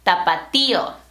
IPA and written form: ta.pa.ˈti.o (Tapatío)